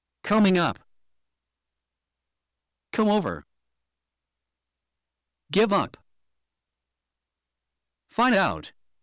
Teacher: We will stress the particles, which are the up, over, and out.